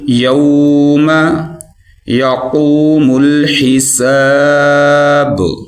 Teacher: جب آپ پڑھیں گے نا یو، تو آپ کے ہونٹ جو ہیں وہ گول ہو جائیں گے، جب ہونٹ گول ہوں گے تو اس کی ادائیگی جو ہے وہ صحیح طریقے سے ہو جائے گی۔